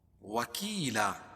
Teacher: وکیلا، یا ساکن سے پہلے کاف کے نیچے زیر ہے تو یا مدہ، یا ساکن سے پہلے زیر ہو تو یا مدہ ہوتا ہے، اس کو ایک الف کے برابر کھینچ کے پڑھیں گے